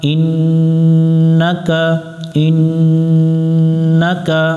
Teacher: ইন নুনের উপর তাশদিদ এই নুনে গুন্না করা ওয়াজিব